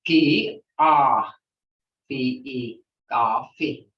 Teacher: So instead of saying coffee as English people do, we say coffee. It's held longer.